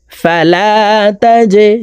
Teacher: জিম কলকলার হারফ নিচের দিকে ধাবিত করে ধাক্কা দিয়ে উচ্চারণ করব